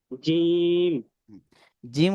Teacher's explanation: জিম উচ্চারণের সময় যাতে বাতাস বের না হয়। জিম বাতাস বন্ধ থাকবে।